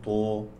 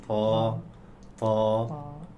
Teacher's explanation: ولا نضم الشفتين لا نقول طو نقول طا